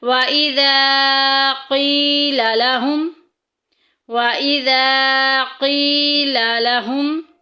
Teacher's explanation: قی میں دیکھیں یا ساکن پیچھے زیر آ گئی ہے تو اس قاف کو لمبا کریں گے کیونکہ یہ مدہ کا قاعدہ جاری ہو رہا ہے۔